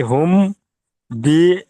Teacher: মিম সাকিনের পরে বা এসেছে, তাই মিমকে এক আলিফ পরিমাণ গুণা করে পড়তে হবে।